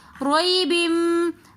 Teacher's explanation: دو زیر کی تنوین کے بعد ینمو کے حرفوں میں سے میم آ رہا ہے تو اس لیے ہم یہاں پر غنہ کریں گے. روئی بم آگے مما کے اندر دوبارہ میم مشدد آ رہا ہے تو اس لیے ہم یہاں پر بھی غنہ کریں گے.